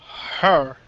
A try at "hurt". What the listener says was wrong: Okay, what you're saying is her. And this is the problem. You just got to speak slowly. Hurt.